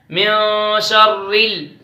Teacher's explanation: را کو باریک پڑھیں گے کیونکہ را پر تشدید ہے اور را نیچے زیر ہے